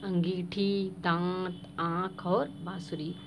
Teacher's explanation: ध्वनि नाक और मुंह दोनों से निकलती है